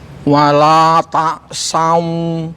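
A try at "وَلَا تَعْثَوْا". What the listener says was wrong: Oke. Sudah Pak. Ainnya sudah ya gitu. Tinggal fa-nya tadi ya. Dilatih terus lidahnya dikeluarin.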